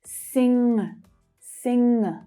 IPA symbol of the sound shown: ŋ